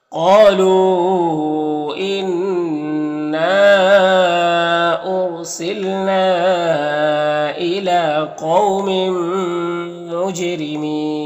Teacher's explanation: یہاں پر تنوین کے بعد میم حروف یومین میں سے تو ادغام ناقص ہوگا۔ جیم حروف قلقلہ میں سے ہے تو جیم میں قلقلہ ہوگا، را کے نیچے زیر ہے، را کو باریک پڑھیں گے